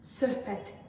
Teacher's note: Sonuncu sözümüz, bu söz necə tələffüz olunur? Söhbət, yəni tərkibində uzanma yoxdur, x samiti də tələffüz zamanı düşmür.